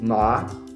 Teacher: Entonces, el segundo tono es ascendente. Comienza descendente y luego ascendente.